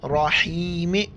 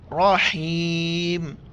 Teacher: रहीम, रॉ के ऊपर ज़बर है, रॉ को मोटा करके पढ़ेंगे। रहीम वफ़ करेंगे, रहीम।